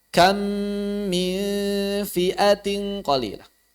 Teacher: mim yang pertama hilang suaranya hilang 100% mim yang kedua bertasydid kita baca seperti membaca mim bertasydid Kam min Kam min begitu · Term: idgham mimi